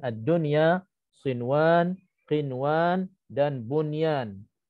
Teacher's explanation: izhar mutlaq apabila nun mati bertemu waw ataupun ya dalam satu perkataan